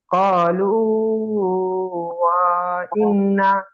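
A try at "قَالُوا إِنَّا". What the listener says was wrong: ওয়া ইন্না নয়, ক্বালু ইন্না, ওয়াও ওখানে নাই, ওয়াওটা ও মাদ্দা।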